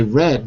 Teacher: my tongue is floating but it's below the alveolar Ridge